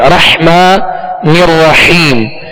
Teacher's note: بس، اب اس میں سکون ہے تو اس میں کامل سکون ادا کریں گے، اور اسی طرح آگے را جو مشدد ہے اس کو بھی دوہرا پڑھیں گے، اور حا کو واضح پڑھیں گے، 2 حا ہے، رحمان الرحیم، حا کو وسط حلق سے پڑھیں گے۔